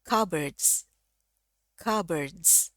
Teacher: ini P-nya tidak usah dibaca langsung masuk huruf B-nya aja. CBDs S-nya dia dibaca pakai Z ya.